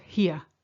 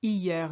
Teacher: It's not here. It's hier. You ignore the H.